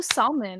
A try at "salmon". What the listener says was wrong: She pronounces the L.